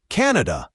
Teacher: And for Canada, pay attention to the stress. It's usually stressed on the first syllable, Canada, not Canada.